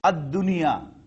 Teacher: it will not be pronounced as Al-Dunya. Lam will be silent.